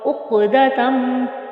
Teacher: قاف پر یعنی موٹا پڑا جائے گا اور قاف پہ ہم قلقلہ بھی کریں گے اور عین کو بھی وسط حلق سے ادا کریں گے۔